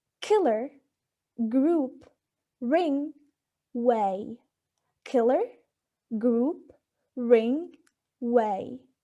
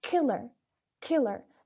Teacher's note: articulated by putting the back part of the tongue against the soft palate